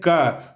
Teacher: क में तो क हम लोग बोल ही रहे हैं, साथ ही साथ इसमें अ भी बोला जा रहा है, यानी कि क जोड़ अ हो रहा है।